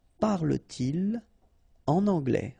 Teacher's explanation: So no liaison after your pronoun